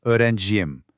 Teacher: It inserts a buffer consonant, and that consonant is pretty much always the letter Y.